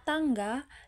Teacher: Bunyi T seperti pada kata tangga diproduksi dengan ujung-ujung lidah yang menyentuh langit-langit mulut